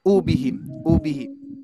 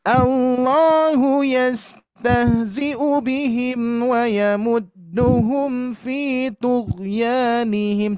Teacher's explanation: masih kepanjangan Bu, masih kepanjangan. U-nya pendek saja.